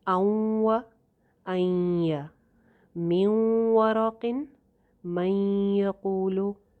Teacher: ہلکی سی نون کی آواز باقی رہ رہی ہے، اس لیے یہاں پہ ناقص ادغام ہے